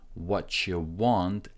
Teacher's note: when you connect T and Y, it creates a sound ch. What you want, and U is short, so it can sound like yeah.